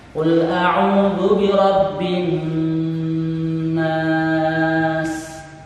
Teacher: panjang dari dengung adalah 2 ketukan